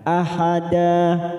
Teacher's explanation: huruf da berharakat fathah tanwin karena diwakafkan namanya bacaan Mad Iwat dua harakat kita panjangkan